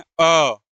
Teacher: जब हम अ का उच्चारण करते हैं अ तो ऐसा लगता है कि ये जीभ के कौन से भाग से आ रहा है? मध्य भाग से आ रहा है। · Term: मध्य स्वर